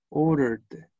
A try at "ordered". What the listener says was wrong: Ya, ahí tiene que ir una D al final. Order.